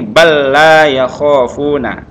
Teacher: Langsung lam ini enggak lagi berbunyi yang lam pertama, tapi langsung masuk ke lam kedua, namanya idgham, memasukkan ya. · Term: idgham mutamatsilain